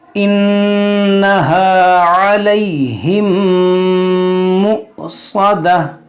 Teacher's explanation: یہاں پر نون مشدد ہے، اس میں غنہ کریں گے